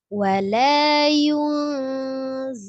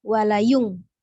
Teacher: ketika kita mengucapkan huruf nun sukunnya, mulut kita sudah membentuk makhorijul huruf zai. Dibaca samar, tidak jelas nun ataupun tidak jelas ya, jelas dia samar mendekati huruf sesudahnya. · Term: ikhfa